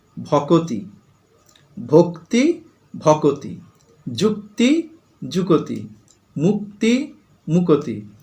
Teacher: ক আর ত, তার মাঝখানে দেখো একটা অ চলে এসেছে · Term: স্বরভক্তি